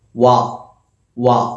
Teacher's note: വവിന്റെ മഹറജ് ഏതാ ഷഫത്തനി അഥവാ രണ്ട് ചുണ്ടുകൾ